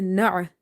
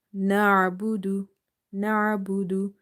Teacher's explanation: Ain is from the middle of the throat. Na'budu. So when ain is silent and we are trying to pronounce it from the middle of the throat, sometimes we give it a sudden pause.